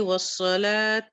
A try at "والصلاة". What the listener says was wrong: یہاں پر نا بس ہا کو تھوڑا سا کلیئر کر لو. والصلاح